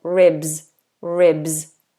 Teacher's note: the S is voiced so it sounds like a zed · So make sure you're doing that BS, ribs, ribs. And the S is voiced, so it sounds like a Z